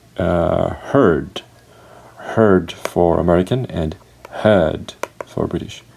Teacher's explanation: The R sound is missing, or it is not pronounced in British English.